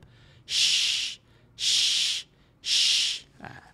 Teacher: hanya pada huruf syin berhamburan bunyi dia macam suruh orang senyap